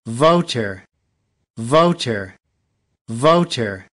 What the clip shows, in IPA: ˈvəʊ.tə